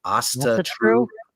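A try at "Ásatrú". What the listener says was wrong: Asatru. No, it's after the A though. Asatru. Oh, then Astatru. Spelled correctly, it's Astatru.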